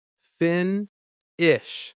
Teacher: Finish. Stress on the first syllable.